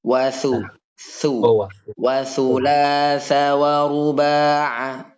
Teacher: Huruf sa. Sa keluar lidahnya sama dengan za.